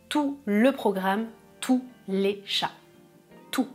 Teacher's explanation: je ne prononce pas le T ou le S